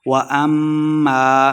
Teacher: میم شدد غنہ کرنا ہے